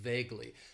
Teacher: It has 2 syllables, and the stress is on that first syllable